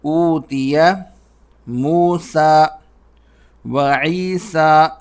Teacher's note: موسیٰ اور عیسیٰ کے اندر جو آخر میں یا ہے وہ نہیں پڑھی جاتی